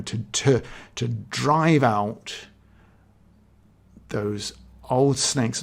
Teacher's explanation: it's almost like every syllable there apart from the first one is stressed · Drive is a stressed syllable. It's a longer syllable.